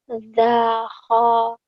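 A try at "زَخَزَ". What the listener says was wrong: The kho. Ini kho-nya ngorok lagi.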